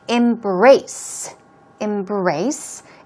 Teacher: stress goes on the second syllable